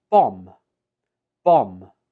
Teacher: There is no B sound.